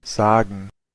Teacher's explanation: Eh, los austriacos lo pronuncian con una S, con una S silbante, mientras que los alemanes pues lo pronuncian con una S vibrante.